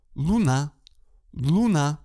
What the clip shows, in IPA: ɫu'na